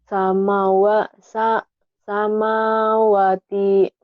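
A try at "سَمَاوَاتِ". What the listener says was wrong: Wanya juga panjang, Neng. Samawati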